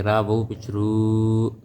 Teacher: را وو پیش رو، وو کے اوپر جزم ہے، مطلب وو ساکن ہے. وو ساکن ہو، اس سے پہلے پیش ہو، اسے وو مدہ کہتے ہیں، اس کو بھی ایک الف کے برابر لمبا کریں گے